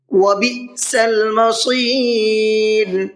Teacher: وبئس المصیر، بئس کے حمزہ کو جھٹکے کے ساتھ میں پڑھنا ہے، اس لیے کہ یہاں پر یہ حمزہ ساکنہ ہے اور حمزہ ساکنہ جھٹکے کے ساتھ میں پڑھا جاتا ہے۔ مصیر، صاد کو پر کر کے پڑھنا ہے اور را کو باریک کر کے پڑھنا ہے، اس لیے کہ را ساکن سے پہلے یا ساکن ہے اور را ساکن سے پہلے یا ساکن ہو تو را ہمیشہ باریک پڑھی جاتی ہے۔